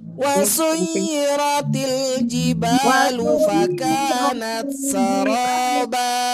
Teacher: Ujungnya naik karena irama ros yang keempat naik.